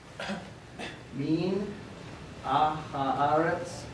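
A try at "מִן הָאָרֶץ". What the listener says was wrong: Okay, ha'aretz. There's no ah there. Okay, min ha'aretz.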